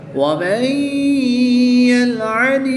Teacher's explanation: متحرک حرف کو مشدد حرف کے ساتھ ملائیں گے اور نون ساکن کو یا مشدد میں مدغم کر کے یعنی شامل کر کے غنہ کر کے پڑھیں گے